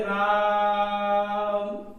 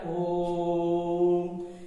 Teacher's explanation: ओ और मां के बीच में काफी समय तक हमारे मुंह से ध्वनि निकलती है, और ध्वनि निकलती है अर्थात स्वरों का उच्चारण हो रहा है, वही हमारा क्या है? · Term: प्लुत स्वर